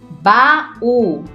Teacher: Baú se separa, o U é mais forte e forma hiato com a vogal A.